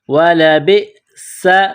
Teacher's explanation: وَلَبِئْسَ، با کو حمزہ کے ساتھ ملانا ہے، وَلَبِئْسَ، سین میں سیٹی کی آواز پیدا کریں گے